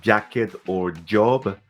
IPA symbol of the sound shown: dʒ